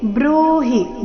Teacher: ಬೃಹ ದೀರ್ಘ ಹಿ ರಸ್ವ